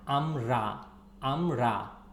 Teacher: The R is here strong R, amra, amra. Okay, it's not soft R.